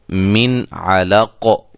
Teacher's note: تو یہ جو ہے نون ساکن اور تنوین کے بعد ان 6 حروف میں سے کوئی بھی حرف آ جائے تو وہاں ہم اظہار کریں گے، یعنی کہ نون ساکن اور تنوین کو ظاہر کر کے پڑھیں گے، غنہ نہیں کریں گے